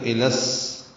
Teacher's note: الا کے لام کو سین سے ملا دیں گے تو الس، یہ ادغام شمسی ہو رہا ہے